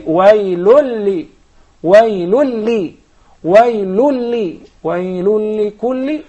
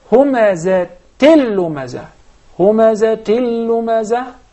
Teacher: luckily we have two tanweens idgham without ghunna